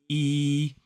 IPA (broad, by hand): iː